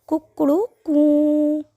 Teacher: प्लुत स्वर कू वो 3 मात्रा के बराबर बोला जाता है, इसलिए वो प्लुत स्वर का उदाहरण है।